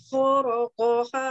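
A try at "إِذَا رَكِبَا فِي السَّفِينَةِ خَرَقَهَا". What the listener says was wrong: Rakibanya masih pendek tadi, hatanya kurang panjang. Rakiba dua harokat, hatta lima ketuk. Lima harokat.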